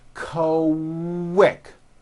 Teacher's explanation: the word quick is pronounced with a K and a strong W sound. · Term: Q sound